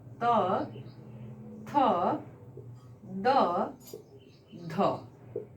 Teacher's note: इनके उच्चारण में हमारी जीवा दांतों की ओर टर्न करेगी, दांतों से टकराएगी।